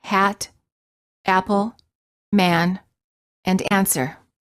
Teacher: The lips are open, not rounded, and the tongue is in the lowest position of all the front vowels. The tongue is flat on the floor of the mouth. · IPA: /æ/